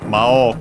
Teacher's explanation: Of course not on the U, which is in this case O-U, so long O. So yeah, the accent stays not on the long vowel, but on the O, on the first one. But yeah, accented in the middle, so be careful, despite being technically a Chinese compound. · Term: accent of Mao